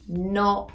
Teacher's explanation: Not is a really open sound